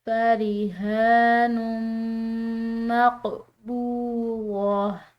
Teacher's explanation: یہ تنوین کے بعد میم آ گیا ہے جو کہ 4 حروف یا واو میم اور نون میں سے ہے، تو یہاں پر ہم اس کے ساتھ غنہ کو ملائیں گے